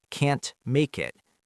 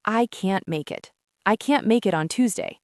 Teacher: The T sound almost stops in our throat. It's very subtle.